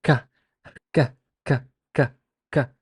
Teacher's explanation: completely stops the airstream in its passage from the lung to the mouth, then releases it, an air explosion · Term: plosive